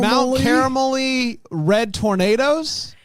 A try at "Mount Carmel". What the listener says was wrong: Mount Carmel Red Tornadoes. I said, you know what I did? Mount Carmel Area Red Tornadoes.